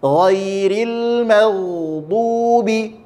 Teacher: nun mengalir juga, lam mengalir juga, ain mengalir juga, tapi tak sepanjang ukuran mengalir rokhawah. Itu adalah pengertian dari tawassut.